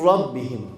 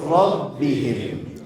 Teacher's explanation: direkt nun harfini atlıyoruz yok ediyoruz ve mim harfini rayya katarak burundan ses getirmeden okuyoruz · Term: gunnesiz